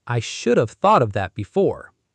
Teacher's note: The word have shrinks to just a soft v. The stress stays on could, should, would. The v is almost whispered.